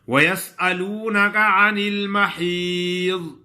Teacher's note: ضاد کا مخرج، زبان کا حافہ، اوپر والے 5 داڑے، اس سے ضاد ادا ہوتا ہے